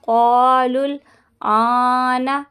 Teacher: لام کو لام سے ملائیں گے